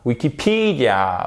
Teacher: vous avez votre accent tonique sur cette troisième syllabe